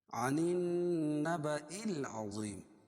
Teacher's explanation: عن نون مشدد ہے کیونکہ نون پر تشدید ہے، اس میں غنہ کر کے پڑھیں گے۔